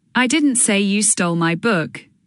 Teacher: stressing I in I didn't say you stole my book implies someone else did